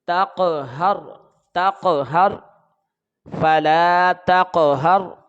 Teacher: جب تا کو قاف کے ساتھ ملائیں گے تو جنبش کے ساتھ ہم اس کو پڑھیں گے، کیونکہ یہ حروف قلقلہ ہے، کیونکہ حروف قلقلہ ساکن ہو تو جنبش کے ساتھ پڑھے جاتے ہیں.